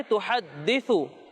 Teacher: سا میں سیٹی کی آواز نہیں آئے گی